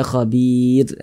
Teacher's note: maka huruf rnya dibaca tipis dibaca tarkik · Sebelumnya ada huruf ya sukun. Maka huruf ro-nya dibaca tipis, dibaca tarkik sehingga dibaca khabir. Nah, ditipiskan huruf ro-nya.